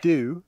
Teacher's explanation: we also see that that old oo has moved forward in the mouth